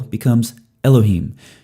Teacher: when you add something to the end of a word in Hebrew, Hebrew likes to keep that accent on the end. And so that changes the vocalization, changes the vowels throughout the word in the vast majority of cases.